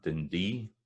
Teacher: So a place like Dundee, it's da-da. Some folk will pronounce that Dundee, so that's da-da, da-da, with the stress at the end, but most of the time it'll be Dundee.